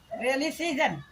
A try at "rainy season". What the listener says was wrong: रेली नहीं, रेली नहीं, रेनी रे